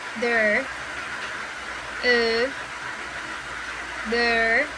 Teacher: To produce this sound, the jaw opens slightly more and the tongue relaxes toward the center